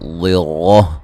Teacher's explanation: ضرہ ضاد کو موٹا ادا کریں گے، اور یہاں را کو بھی موٹا ادا کریں گے